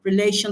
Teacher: Relation, the stress is on the second syllable.